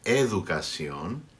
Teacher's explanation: word there is pronounced like an English D there CC on in between vowels educación the D becomes like a th but this time is like a th in efficacy on this